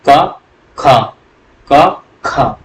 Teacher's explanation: क और ख में आप बोल के देखिएगा ख बोलने पर ज्यादा वायु निकलेगी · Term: महाप्राण